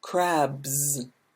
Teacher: if it ends in a voiced sound like boo then we have a z